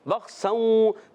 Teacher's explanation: اور بخسوں، با کو خا سے ملانا ہے، با کو خا سے ملائیں گے. خا کی ادائیگی حلق کے اوپر والے حصے سے ادا ہوتا ہے، غین اور خا کی ادائیگی ایک ہی جگہ سے ہوتی ہے